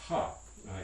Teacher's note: we have this voiceless glottal fricative ha in english as well · There's one last fricative in English, which is the glottal fricative, and that's a voiceless fricative. It's going to be almost impossible to produce voicing and a glottal fricative at the same time.